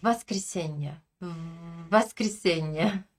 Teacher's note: Je garde le son initial V et je le rallonge. Je garde mes dents serrées contre ma lèvre inférieure un peu plus long un peu plus longtemps.